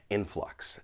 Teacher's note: there are two syllables. the stress is on that first syllable.